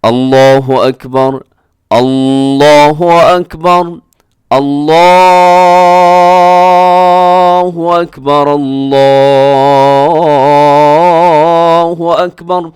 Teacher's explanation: اب اس میں اور کیا غلطی ہوتی ہے، لوگ بعض دفعہ کیا کرتے ہیں، اللہ ایسے شروع میں حمزہ کو لمبا کر دیتے ہیں، تو یہ درست نہیں ہے، حمزہ کو الف بنا کے پڑھتے ہیں تو یہ درست نہیں ہے